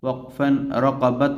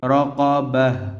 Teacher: وقفن کے بعد یہ جو گول تا ہے یہ ہا بن جائے گی۔ وقفا رقابہ، وقفا رقبت نہیں پڑھیں گے، رقابہ۔